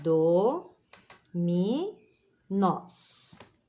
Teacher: 3 sílabas A última é a tônica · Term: oxítona